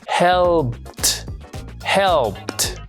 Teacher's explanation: al tocarnos la garganta vemos que no produce ninguna vibración, por lo tanto, al pronunciarlo en pasado no se dice helpet, sino que le vamos a reemplazar por ese sonido que está ahí.